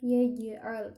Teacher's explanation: Jim itu huruf tengah lidah